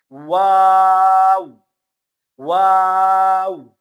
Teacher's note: واو کے شروع میں بھی ہونٹ گول ہوں گے، اور اخیر میں ختم ہونے کے صورت میں بھی ہونٹ گول ہوں گے